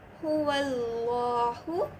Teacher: ஃபத்ஹாக்கு அப்புறம் லாமே ஜலாலா வரதுனால நம்ம அல்லாஹு அப்படி நம்ம படிப்போம். லைட்டாக இல்லாமல் ஹெவியாக படிப்போம்.